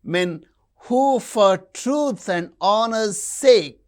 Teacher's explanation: men truth honor sake these are stressed